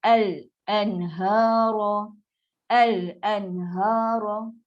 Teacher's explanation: Tak ada mesti al. Naik pangkal lidah, naik kita punya makhraj untuk lam, al.